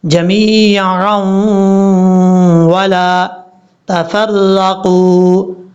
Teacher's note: یہاں دو زبر کی تنوین کے بعد واو آ رہا ہے تو ادغام یرملون کی وجہ سے یہاں غنہ کریں گے